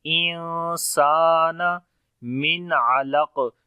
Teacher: سین کو لمبا کریں گے، الف مدہ ہے